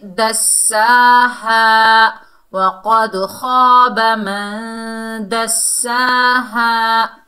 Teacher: दाल को सीन से मिलाएंगे, मजबूती और जमाओ से, क्योंकि सीन मुशद्दद हर्फ है। और खड़े ज़बर को और अलिफ मद्दा को दोनों को एक एक अलिफ की मिकदार खींच कर पढ़ेंगे।